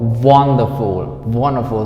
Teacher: So the stress is on the first syllable.